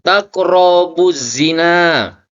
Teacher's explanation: alif lam mati yang bertemu dengan salah satu huruf syamsiah dibaca lebur sehingga bunyi al tidak dibaca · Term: alif lam syamsiyah, alif lam samsiyah